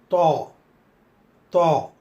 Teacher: we need to flatten the frontal tongue and press lightly just before the upper inner line of the frontal teeth. Use the throat sound as well and say toi.